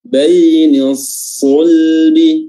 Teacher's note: Baini sulbi, ya, padahal baini sulbi, ya, dia lebih tebal dari huruf sin, walaupun satu makhraj, ya. Huruf sad, sin dan zai itu semuanya satu makhraj, namun yang membedakan adalah tingkat ketebalan dari ketiga huruf tersebut. Dan huruf sad merupakan huruf yang paling tebal.